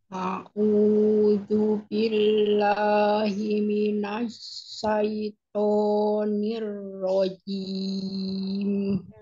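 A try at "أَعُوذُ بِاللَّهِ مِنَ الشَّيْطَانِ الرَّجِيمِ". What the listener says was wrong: Syaiton, gak ya? Asyaiton. Bibirnya nggak boleh bergerak untuk to, ya. Jangan dimajukan. Kemudian sekarang di huruf ain ya. Huruf ain, makhrajnya ditekan au, jangan jangan seperti hamzah. Au, ya. Au, auzu.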